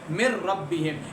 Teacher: جہاں پہ لام اور را آئے گا وہاں پہ آپ نے غنہ نہیں کرنا، مطلب ناک میں آواز نہیں لے کر جانی، ادروائز آپ نے ناک میں آواز لے کر جانی ہے۔ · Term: بلا غنہ